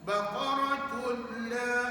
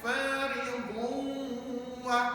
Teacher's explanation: Kalau bila ghunnah tak dengar, tapi kalau ma'al ghunnah dengar. Jadi contoh bacaannya baqaratul la.